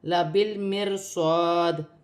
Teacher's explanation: را باریک پڑھی جائے گی، را ساکن سے پہلے زیور ہے۔